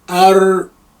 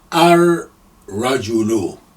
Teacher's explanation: No sound of lam is there, and you link the r with the first embedded sukun on the ra, ar-rajulu.